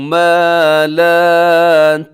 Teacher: ما لا دونوں کو لمبا کرنا ہے کیونکہ الف مدہ ہے